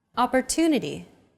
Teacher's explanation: the stress syllable to in Opportunity is deemed more important so it's pronounced longer than all other syllables